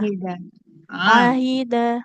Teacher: huruf ain bu ya di tengah tenggorokan kita